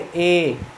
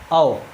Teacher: इनके उच्चारण में हमारा जो मुख है वो आधा खुलता है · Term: अर्धविवृत